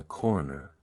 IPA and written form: ˈkɔːr.nɚ (Corner)